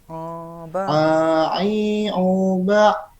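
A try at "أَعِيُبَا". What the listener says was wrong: Belum, itu masih ke hidung. Aiu. Masih ai, bukan ai tapi ai. Ai. Masih ke hidung. A I U coba. Karena ada ain ya. Aiu. Masih itu Kang, masih ke hidung ya. Jadi ujungnya itu harus vokal A, jangan vokal A. Oh, jangan vokal A, tapi A. A, A, A. A, ujungnya A. Ai. Ai. I, bukan I, tapi ai.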